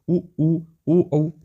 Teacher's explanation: जिनके उच्चारण में होठ कैसे होते हैं गोलाकार हो जाते उन्हे वृत मुखी कहते